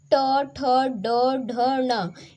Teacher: ये जो पांच वर्ण हैं ये मूर्धा के अंतर्गत आते हैं